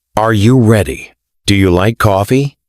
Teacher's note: Your voice goes up at the end of the sentence. Used for yes-no questions. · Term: Rising intonation